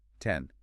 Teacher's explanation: You start with the hard T, where air is released forcefully through the teeth, open wide to that E, and then your tongue sweeps all the way up to touch the roof of your mouth to create the final N sound.